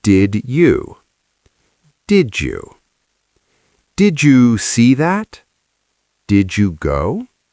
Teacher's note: Now the Jew sound. D plus Y.